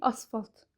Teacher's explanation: sözün ortasında gələn kar samitlərdən ikincisi çox vaxt cingilt tələffüz olunur